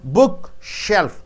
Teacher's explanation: Book should be stressed more.